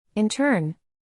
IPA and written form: ˈɪn.tɝːn (Intern)